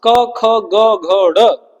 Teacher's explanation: पांचों कहां से बोले जाते हैं? कंठ से।